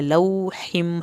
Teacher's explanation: لو واو کی وجہ سے ہم نے اس کو لمبا کیا ، لوحم، ہا کو حلق سے پڑھنا ہے، میم کی شد